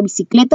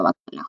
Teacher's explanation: Por lo tanto, es un acento prosódico y solamente lo puedo pronunciar. Su fuerza de voz la vamos a encontrar en la penúltima sílaba